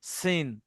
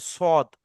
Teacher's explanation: এই যে যা এবং সিন যেমন বলেছেন এই যা আর সিন যেমন বলেছেন অনুরূপভাবে এই সদ ওইরকম যেবার আগা সামনের নিচের দাঁতের সঙ্গে লাগিয়ে যা সিন সদ উচ্চারিত হয় শুধু সিন আর সদের মধ্যে পার্থক্য এতটুকু সিনটা মুখটা বড় করতে হয় যেটাকে বারিক বলা হয় আর সদ মুখ গোল করতে হয়